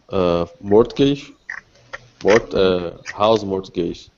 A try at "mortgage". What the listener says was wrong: A mortgage. We don't we don't say the T.